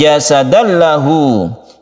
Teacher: Idgham artinya masuk, suara tanwin ini masuk ke huruf lam, oleh karena itu timbullah tasydid di sini. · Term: idgham bila gunnah